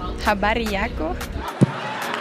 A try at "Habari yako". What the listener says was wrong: Nice one.